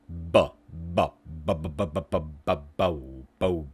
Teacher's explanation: B is a voiced bilabial stop